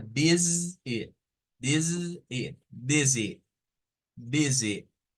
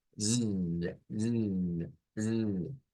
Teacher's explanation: Tendríamos la peculiaridad de que una S se convierte en el sonido de una Z, de una Z, como la vibración de la Z. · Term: sonido Z